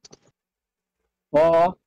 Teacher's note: It is read from the top throat with force. The scratchy sound in top throat should be dominant and clear.